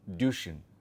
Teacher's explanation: There is no ‘y’ there, there is no umlaut there. There is no ‘ya’ sound there. It is a very flat Duschen.